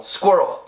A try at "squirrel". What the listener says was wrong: Better, but you gotta work on that little R that goes rel.